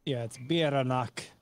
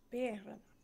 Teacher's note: the emphasis on the first syllable